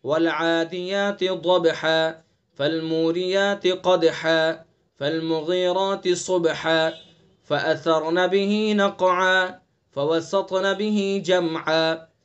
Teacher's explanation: حرف موقوف کے 2 زبر کو الف سے بدلنا ہے۔ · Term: وقف بالابدال